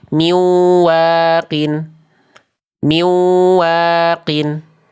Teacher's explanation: Lebur doang, dengung, tapi nggak ditahan.